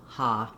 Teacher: So very often in a stressed syllable, when we have an O in English, we actually say the ah vowel. So you don't want any rounding here, not holiday or holiday, but just a straight open ah, ha. So thinking of it as AH may be helpful for you.